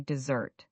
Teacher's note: You're saying dessert with that Z sound and stress on the second syllable.